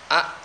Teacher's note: hamziah contohnya a, enggak mengalir suaranya.